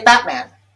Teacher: Usually we don't say Batman, we say Batman, and that T becomes glottalized, and the glottis is actually closing here